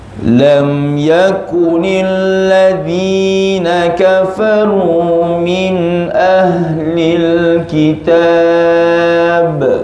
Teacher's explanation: Yang pertama dza, keluar lidah.